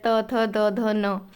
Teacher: दंत जो ऊपर के दांतों से बोला जाता है